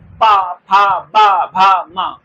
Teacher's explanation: ओठ से ओठ लग रहे हैं, तो इसीलिए मैंने क्या इसे बोल दिया? ओष्ठ व्यंजन बोल दिया।